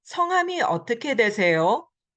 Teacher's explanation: The yo goes up again because it's a question.